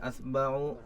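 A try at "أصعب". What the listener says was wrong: Jangan dibalik hurufnya ya.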